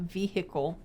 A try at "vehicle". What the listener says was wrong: the h is silent